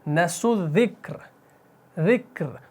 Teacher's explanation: اگر یہاں پر دیکھیں جیم آ گیا وقف جائز، اگر یہاں پر رکیں گے تو یہ را آپ کا عارضی سکون سے ساکن بنے گا، اور پھر آپ پڑھیں گے نسوا الذکر، ذکر. تو را کو آپ نے باریک پڑھنا ہے وقف کی صورت میں